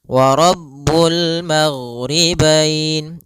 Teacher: karena huruf gin tidak ada sifat qalqalah, tidak ada sifat pantulan · Kemudian pada bacaan wa rabbul maghribain kembali kita mendapati ada alif lam qamariyah, yaitu alif lam yang tertulis dan dibaca dengan jelas suara lamnya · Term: huruf ghain